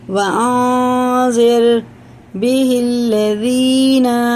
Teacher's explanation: یہ نون ساکن کے بعد زال آ رہا ہے تو یہ اخفا ہوگا، اس کو ایک الف کے برابر ناک میں چھپا کے پڑھنا ہوگا، اور زبان ہمارے تالو سے نہیں لگے گی، منہ میں کہیں بھی نہیں لگے گی جب ہم پڑھیں گے۔